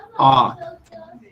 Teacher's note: a vogal baixa, que é o A, que a língua fica o mais abaixada possível e você tem tanto a maior abertura quanto a maior caixa de ressonância de todas elas.